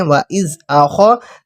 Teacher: خا زبر خا کو پر موٹا کر کے پڑھتے ہیں